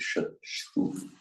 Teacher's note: This S that we write with the slash on top is the palatal sh sound, with the tongue in the same position as the j